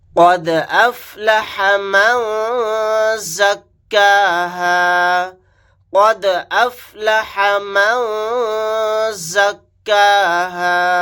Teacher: یہاں پر قاف ساکن ہے تو یہاں پر قلقلہ کر کے ہم پڑھیں گے قد افلح من زکاها قد افلح من زکاها. یہاں پر دال ساکن ہے، یہاں پر قلقلہ کر کے پڑھیں گے. قاف کو موٹا یعنی پر پڑھیں گے.